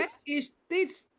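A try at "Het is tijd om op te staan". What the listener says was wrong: Het is tijd. Bukan tit. Het is tijd.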